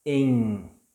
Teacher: when it ends the word, we don't pronounce like M. We produce like letter N. In, with open mouth.